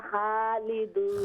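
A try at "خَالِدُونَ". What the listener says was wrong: खा नहीं, खा को मोटा करें। हम फीहा खालिदून। खा को फुल माउथ से मुंह भरकर पढ़े।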